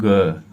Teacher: अंदर से जब उच्चारित करेंगे तो अंदर से ऐसा लगेगा कुछ अंदर से नली में हमारे कंपन सा हो रहा है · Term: सघोष